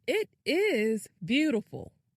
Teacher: makes the word is longer and louder.